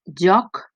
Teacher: joc, la O és oberta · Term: O oberta